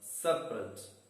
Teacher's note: separate again has two syllables and the stress is on the first syllable